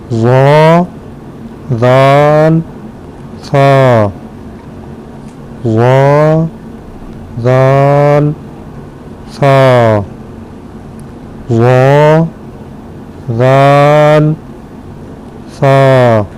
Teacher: زبان کا سرا اور اوپر کے دانتوں کے اندرونی کنارے سے یہ ادا ہوتے ہیں۔